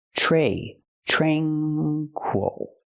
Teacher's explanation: don't say tra tranquil we don't use the a sound like black cat we use the long a sound like pay and say